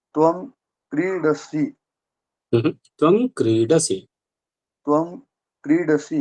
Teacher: क्रीडसी सी को नहीं खींचना है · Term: ह्रस्व